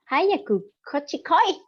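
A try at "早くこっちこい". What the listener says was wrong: Hang on. I want it less cute. I want it more like this.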